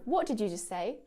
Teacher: I'm missing out the t sound between just and say. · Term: real connected speech